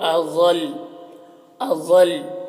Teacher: اضل، ضاد حروف مستعلیہ میں سے پر پڑھیں گے، اور یہاں پر دیکھیے لام مشدد ہے، یہاں پر اگر وقف کریں گے تو دونوں لام کو پڑھنا ہے، لیکن وقف کی صورت میں حرکت کو نہیں پڑھتے ہیں